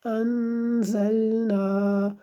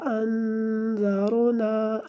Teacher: زا کو سختی سے پڑھنا ہے کیونکہ زا اور ذال میں یہی فرق ہوتا ہے۔ زا کو ذرا سختی کے ساتھ پڑھا جاتا ہے اور ذال کو نرم آواز میں پڑھا جاتا ہے، نرم صورت میں۔